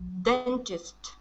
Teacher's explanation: So the stress is at the very beginning